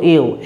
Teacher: যখন দুটো স্বরধ্বনি আমরা একসঙ্গে উচ্চারণ করছি তখন প্রথম স্বরধ্বনিটা খুব স্পষ্টভাবে পুরোটা উচ্চারণ হচ্ছে, তাই যৌগিক স্বরধ্বনির প্রথম স্বরধ্বনিটাকে বলা হয় পূর্ণস্বর, আর দ্বিতীয় স্বরধ্বনিটা একটু হলেও অস্পষ্ট রূপে অর্ধেক উচ্চারণ হচ্ছে বলে যৌগিক স্বরধ্বনির দ্বিতীয়টাকে বলা হয় খণ্ডস্বর বা অর্ধস্বর।